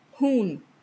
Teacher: It is fricative, voiceless, unaspirated.